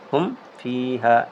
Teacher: میم کو ناک میں چھپانا نہیں، اس کو غنہ نہیں کرنا، اس کو اظہار کرنا، ظاہر کرنا ہوتا ہے۔ پہلے بتا چکا ہے کہ ہم اور تم کی طرح آواز نکالنا ہے، ہم فی ہا اس طرح پڑھنا ہے۔